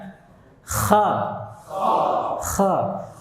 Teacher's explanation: kha ini gesekannya agak kasar dibandingkan ghain